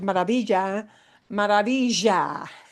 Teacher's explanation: And los porteños, the people from Buenos Aires, have a strong zh.